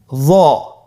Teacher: একটু মোটা করে বলতে হবে। হরফটি হলো মোটা হরফ। বারিক করে পড়া যাবে না। এবং হরফটি উচ্চারণ করার সময় অবশ্যই এক আলিফ টেনে পড়তে হবে।